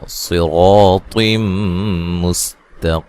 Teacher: स्वाद को मोटा, रा को मोटा, रा के ऊपर खड़ी ज़बर है, ठीक है, रा को मोटा अदा किया जाएगा।